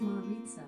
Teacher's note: Maritza is pronounced Maritza, with the stress on the second syllable and a Spanish accent.